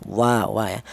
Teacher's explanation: Untuk huruf wawu kelnya huruf berasal dari kedua bibir yang renggang.